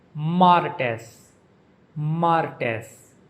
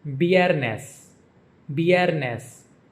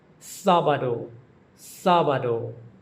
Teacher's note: The days of the week in Spanish are pronounced from Monday through Saturday with the emphasis on the first syllable